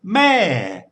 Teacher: bit like if you were calling someone's name from a distance it starts off high and then it would fall · put a lot of energy into the start of the word, and then let it sort of peter off. It's a bit like if you were calling someone's name from a distance. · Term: falling tone, the falling tone